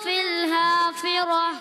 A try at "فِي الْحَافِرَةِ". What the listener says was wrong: فی الحافرہ، فی فی الحافرہ۔ آخر میں بیٹا ہا نہیں نکالنا، پہلے والا ہا آخر میں گول تا کو ہا۔ فی الحافرہ،